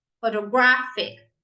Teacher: now we stress the third syllable